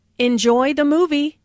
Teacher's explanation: Notice how the intonation rises on movie.